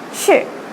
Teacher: the fourth tone is going downwards a little bit like a statement